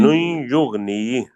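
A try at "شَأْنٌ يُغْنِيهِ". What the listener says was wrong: शाह लंबा नहीं ना करना, शानुन युगनी।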